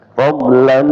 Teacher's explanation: Jadi bukan sekedar dimasukkan saja tapi ada dengungannya. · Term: idgham digunah